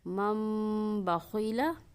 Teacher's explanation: مم بخیلا، یہاں بھی نون ساکن کے بعد حرف با آ رہا ہے تو ہم نون ساکن کو میم کی آواز میں تبدیل کر دیں گے